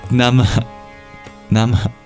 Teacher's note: The complement of the Anuswara is the Visarga, which is at the end here of Nama, and that's an exhale.